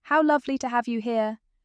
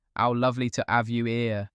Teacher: RP keeps every H crisp and present.